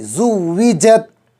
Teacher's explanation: زا میں زنزناہٹ کی آواز آئے گی سختی کے ساتھ، جیم جو ہے زبان کا بیچ اوپر کا تالو، زبان بالکل جو ہے تالوے میں چپک جائے گی